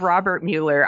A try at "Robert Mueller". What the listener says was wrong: The funny thing is, you actually say Mueller. His name is Robert Muller. It is spelled Mueller, but it's pronounced Muller. And everyone always gets my name like that because they think it's Mueller.